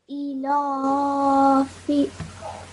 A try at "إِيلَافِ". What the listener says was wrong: So you're saying your alif really quickly. Can you see how I'm taking my time?